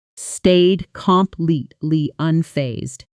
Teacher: The middle syllables compress. The ending consonants barely get their own space. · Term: connected speech pattern